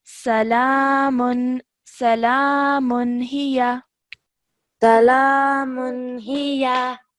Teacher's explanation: the next letter is ha, so we do not produce that 2-second nasal sound for the tanween